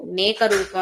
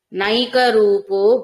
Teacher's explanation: నై ఐత్వం ఇవ్వండి నైక రూపో నేక రూపం అని చదవకండి న ఏకరూపో అన్న శబ్దాలు అన్నమాట న ఏకరూపో అది నైక అయింది సంధి